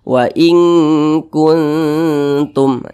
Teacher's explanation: Jadi ketika mengucapkannya disamarkan kemudian didengungkan. Karena dia aqrab maka kadar dengungnya itu dia lemah, jadi lebih kuat kadar samarnya. Jadi lebih condong berbunyi n tapi disamarkan. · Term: ikhfa hakiki aqrab